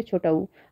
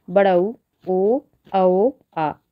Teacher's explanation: जिन स्वरों के उच्चारण ओठों का आकार गोल हो जाता है वे वृत्ताकार स्वर कहलाते हैं।